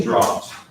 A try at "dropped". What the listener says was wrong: the word drop should be more dropped. Less lifted.